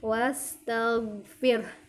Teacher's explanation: di kata wastaghfir, go-nya jangan sampai memantul ya, karena go ini bukan huruf yang ketika sukun dipantulkan. Cara membacanya, keluarkan huruf go-nya dari tenggorokan bagian atas.